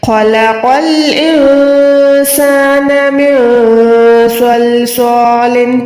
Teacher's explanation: نون ساکن کے بعد سین ہے, یہاں پر اکفا کریں, نون کو چھپائیں